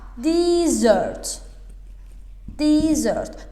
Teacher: Artıq ikinci sözünü 2 sə yazılan oxunmalıdır. Vurğu ikinci hisəyə düşür.